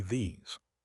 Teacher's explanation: I feel the vibration in my throat on the Z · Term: vibrating Z sound